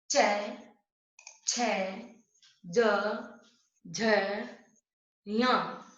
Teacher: यहाँ पर हमारी जो ध्वनि है च वर्ग की, वो हमारे तालु से स्पर्श करती है। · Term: तालव्य